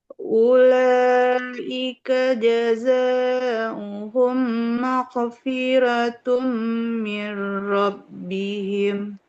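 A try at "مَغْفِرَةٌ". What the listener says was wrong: Huruf lainnya jangan mag tapi maghfiratum. Dia harus mengalir. like mau tanpa aliran nafas, suaranya mengalir dan tebal. Maghfiratum mir rabbihim.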